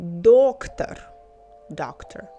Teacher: Doctor stress on the first syllable